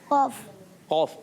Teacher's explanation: बगैर होंठ की गोल के कौफ अदा होता है